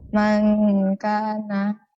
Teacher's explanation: نون ساكنة مخفى عند الكاف المفتوحة بغنى حركتين